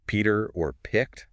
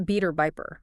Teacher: getting that puff of air aspiration after the P